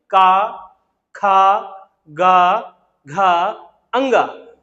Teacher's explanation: इस वाइब्रेशन का कारण ये है कि ये स्पर्शी है, मैंने ऊपर लिखा स्पर्श, ये कंठ को स्पर्श करते हुए निकल के आ रहे हैं · जब आप ये ध्वनियों का उच्चारण करेंगे तो आप देखेंगे एक वाइब्रेशन महसूस होगा कंठ में · यानी जो हवा है, जब हम अंदर से हवा ब्लो कर रहे हैं तो वो हवा कहाँ पे टकरा रही है? वो हवा टकरा रही है कंठ पे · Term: कंठ वर्ग, कंठीय वर्ण